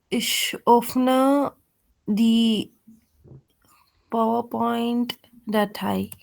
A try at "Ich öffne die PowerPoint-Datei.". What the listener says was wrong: Correct.